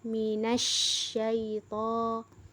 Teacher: selain kita menyempurnakan sifat tafasyinya, di sana juga ada tanda tasydid, di mana harus ditekan, minasyaiton, jadi harus dikuatkan lagi, ya.